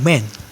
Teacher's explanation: For example, when you say the word man, the lungs sends air up, the vocal cords vibrate because m is a voiced sounds. The lips close to form the m. The air passes through the nose.